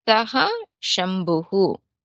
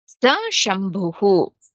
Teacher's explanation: it is just visarga gets lopa for Esha and Sa Shabdat when it is followed by consonant